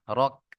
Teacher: কাফ জবর কা হয়, এখানে আয়াতের শেষে কাফ সাকিন হয়ে যাবে, তাহলে র কাফ জবর রক। রাক কেউ বলবেন না, রক।